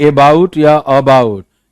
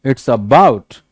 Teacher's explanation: सो बाउट पे जोर है, ना कि ए पे।